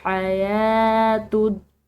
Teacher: या के ऊपर खड़ी ज़बर है जिसकी वजह से हमने इसको एक अलिफ की मिकदार खींच कर अदा करना है